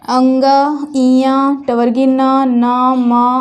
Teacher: ये कुछ ऐसे वर्ण हैं जिनका उच्चारण करने पे हमारे नाक पे, नासिका पे ज़्यादा बल पड़ता है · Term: अनुनासिक वर्ण